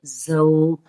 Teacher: ز سیٹی کے ساتھ پڑھیں گے